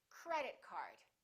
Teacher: Two words representing one object, we stress the first word. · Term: compound nouns